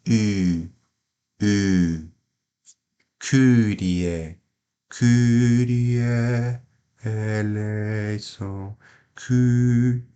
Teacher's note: no original grego esse Y ele é falado da seguinte forma você faz a boca de U esse biquinho quando você fala u só que você pronuncia I